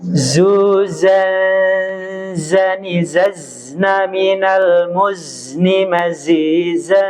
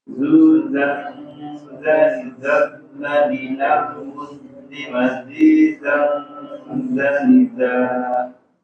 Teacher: Huruf zai mendesis, mengalir. Suaranya itu mengalir.